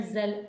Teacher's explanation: زا کو زا کی طرح پڑھنا ہے، زال نہیں بنانا، زا میں سیٹی آتی ہے